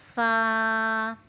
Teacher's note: فا، نیچے والے ہونٹ پہ یعنی نیچے والے ہونٹ کا شکم اوپر دانتوں سے لگائیں، اوپر والے دانتوں سے لگائیں تو حرف فا ادا ہوتا ہے